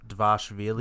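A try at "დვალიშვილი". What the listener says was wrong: Vashvili. Vashvili. I don't think you pronounce the D. Vashvili.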